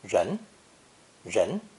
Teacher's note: I will begin with the character for person, people, human, or humans, pronounced with a second rising tone, ren, ren. This is the retroflex R sound, which is similar to the G sound as in the word prestige, with the tip of the tongue curved backwards. Ren, ren.